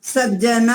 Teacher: त के स्थान पर ज हो जाएगा